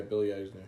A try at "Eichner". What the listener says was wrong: there's a CH in there. Eicher. Eichner.